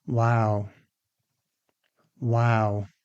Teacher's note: The sixth one is wow. Again with falling intonation. This shows interest, surprise, or admiration.